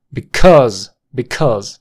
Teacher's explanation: la sílaba tónica está en cuse cuse es una shua con acento cuse cuse Because Because you